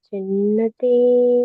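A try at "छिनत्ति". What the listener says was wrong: Chinatti. It is the two T's are there. Chinatti. Chinatti. Not Chinnati. Chinatti.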